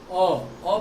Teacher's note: ओ बोलने पे क्या हो रहा है कि आधा खुला है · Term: हाफ ओपन